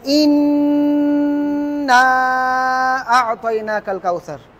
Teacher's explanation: এই যে ইন বলে যে নুনে ধরে রাখলেন, এটা একটা গুন্না।